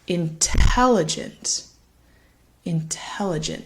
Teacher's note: falls again on that second syllable intelligent intelligent and you'll notice the first syllable in intelligent it's a little quieter a little bit faster the third syllable actually also sounds like an ah